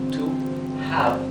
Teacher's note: la H inglesa no es totalmente muda como la H del castellano, sino que es como una exhalación. Tiene un sonido suave.